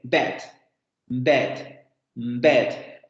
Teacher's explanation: Primero es una vocal en donde la lengua se va a echar hacia adelante. Es una vocal en donde se va a abrir la boca más que en la abertura media, porque acuérdense que acabamos de ver una vocal media.